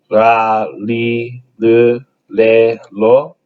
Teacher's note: it's kind of a combination of an R a D and an L sound